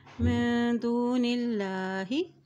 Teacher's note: अल्लाह के नाम से पहले ज़ेर आ गया है तो अल्लाह का नाम बारीक अदा किया जाएगा